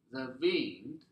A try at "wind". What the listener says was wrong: Careful not to say wind. No, no lower lip here, but wind. Watch me. Wind. Yes, lips forward for Wind.